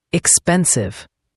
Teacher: Make sure the v sound is clear, like a buzzing sound.